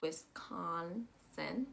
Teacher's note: there's only one S, so it's going to actually sound like an S, not a Z.